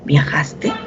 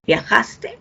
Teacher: va a tener un sonido final una entonación final descendente pero cuando es una pregunta y si esta pregunta es una pregunta directa total aquella que tiene como respuesta un sí o un no siempre será ascendente